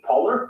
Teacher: that was the intrusive r in british english